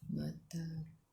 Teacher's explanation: Bila berhenti ada huruf qalqalah ba judah kotor, ba jim dal qafta, dan tak ada baris sabdu. Ia adalah qalqalah kubra, lantunannya besar.